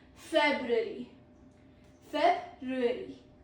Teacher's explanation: Pro tip is first R is often swallowed.